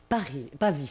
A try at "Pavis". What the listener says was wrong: Pavis, on prononce le S.